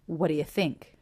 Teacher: so the word think is stressed none of the sounds reduce here